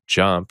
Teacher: So, when you start saying a J word out loud, like jump, notice your tongue starts in the place of articulation for the D or T, but your voice is turned on, so it's a D. Your mouth opens as your jaw or tongue muscles push forward and tense to create air friction which is needed for the next part of the J sound.